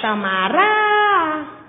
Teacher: o rá já é tônico, é a sílaba mais forte da palavra